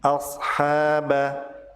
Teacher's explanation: Ha dibaca panjang 2 harokat pada kata ashaba dan disebut sebagai mad tabi'i